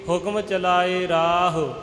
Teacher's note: ਰਾਰੇ ਨੂੰ ਲੰਬਾ ਕਰਕੇ ਹਾਹੇ ਦਾ ਔਂਕੜ ਉਹ ਛੋਟਾ ਕੀਤਾ ਜਾਵੇਗਾ